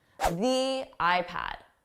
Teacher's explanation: Notice how it sounded more like a stressed the with that long E.